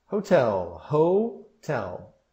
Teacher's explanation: E a sílaba tônica é a segunda.